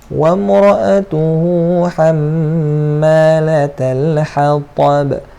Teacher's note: Ta dengan ba ni jadi qalqalah kubra.